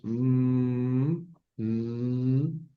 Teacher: utilizamos la nariz para pronunciarla, la m, la n. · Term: nasales